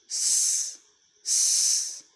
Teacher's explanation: It was voiceless. Place of articulation is alveolar and manner of articulation is fricative.